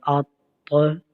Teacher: حمزہ تو زبر ات، یہ تو حرف قلقلہ ہے، حرف مستعلیہ بھی ہے، اس کو ہم موٹا بھی پڑھیں گے اور ساتھ بھی ہم قلقلہ بھی کریں گے، اور یہاں پر قلقلہ ہم جماؤ کے ساتھ کریں گے کیونکہ یہ مشدد ہے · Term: قلقلہ جماؤ کے ساتھ